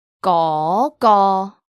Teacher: 嗰 is the second tone. It's a high rising tone, like asking a question.